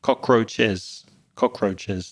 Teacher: you pronounce the S at the end with an extra syllable